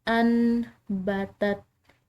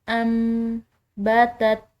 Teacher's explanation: جہاں پر بھی ایسا ہو کہ نون ساکن کے بعد با آ جائے تو وہاں نون ساکن میم سے بدل جاتا ہے